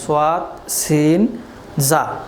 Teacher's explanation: জিহ্বার অগ্রভাগ সামনের নিচে 2 দাঁতের অগ্রভাগে লাগিয়ে উচ্চারিত হয় সোয়াদ, সিন, জা।